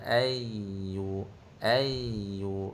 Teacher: Ayyu tekan sikit pada ya yang bertasyd satu harakat